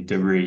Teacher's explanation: Americans tend to put final stress on words from French.